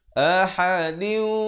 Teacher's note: Ahadiu di sini idgham bi gunnah, tanwin bertemu waw dibacakan dengan dengung